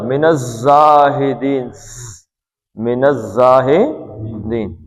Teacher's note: زے ہے، اس میں یہ پتلا ہے اور سیٹی ہے